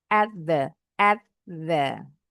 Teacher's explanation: akhiran t-nya ditempelin aja ke the bunyinya jadi seperti the